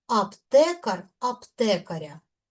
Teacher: Наголос падає на корінь.